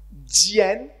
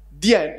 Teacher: I hear a bit of fricative after the D.